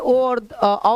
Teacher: मैं ओ और औ बोलूं तो कंठ और ओष्ठ बोलिएगा।